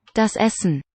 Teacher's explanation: We go straight from the S into the N. Das Essen. Not Essen.